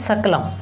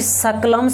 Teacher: वो है तालव्य स, यानी तालु से बोले जाने वाला, और दूसरा ये वाला स है जो दंत से बोले जाते हैं।